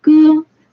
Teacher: the first flat tone